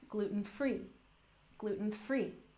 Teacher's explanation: Typically the stress is on the last syllable, gluten-free, gluten-free.